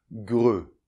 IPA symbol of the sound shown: grə